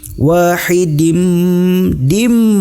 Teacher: ini adalah Idgham Bighunnah ditahan dengan dengung kehidung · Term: idgham bigunnah